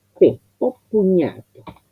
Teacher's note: O es un monosílabo fuerte. Entonces va a llamar, es el proceso de asimilación, va a llamar como para asimilar y absorber dentro de sí la consonante que sigue.